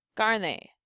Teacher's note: So we have this E as our last syllable, which makes this A our second to the last syllable. So for carne, the A receives the stress or emphasis